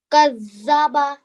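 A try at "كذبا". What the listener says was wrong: Much better. Excellent.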